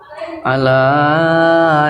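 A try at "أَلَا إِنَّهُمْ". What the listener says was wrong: Jangan Allah. Jangan Allah. Jangan Allah. Tipiskan. Lidahnya dilek dalamnya. Jangan Allah.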